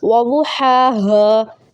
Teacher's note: دونوں ہا کی جو مخارج ہے تلفظ وہ چینج ہے، ہا حلق کے درمیان سے اور ہا حلق کے سب سے نچلے حصے سے